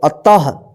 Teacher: और यहाँ पे देखिए त के बाद क्या है, यहाँ पे दो बिंदी है, ऊपर नीचे विसर्ग है, अह की मात्रा है, तो इसको पढ़ेंगे। त के बाद ह उच्चारण होगा